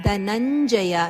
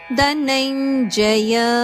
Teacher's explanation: ಚ ವರ್ಗದ ಅನುನಾಸಿಕ ಆನದ ಉಚ್ಚಾರಣೆ ಬರಬೇಕು